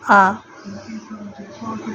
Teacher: तीसरा है विवृत स्वर, जिन्हें हम निम्न स्वर भी कहते हैं, जिनके उच्चारण में मुख सर्वाधिक खुला होता है